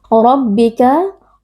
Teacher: ra tafkhim atau tebal dibaca dengan mengangkat pangkal lidah karena di sini huruf ra berharakat fathah.